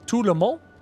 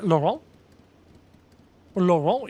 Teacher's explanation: you don't pronounce the T at the end of something like Tout le monde